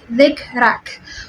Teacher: We should also notice that when we pronounce or when we produce kaf, there is a slight gush of air or breath that is produced along with it, which we call it hams.